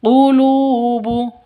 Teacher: Alqamariyah qulubu lu panjang dua ketukan. Panjang dua ketukan karena ada wau mati diawali dengan dommah. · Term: Mad asli atau mad thbi'i